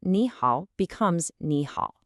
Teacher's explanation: when you have two third tones right next to each other, the first one actually changes. It becomes a rising second tone.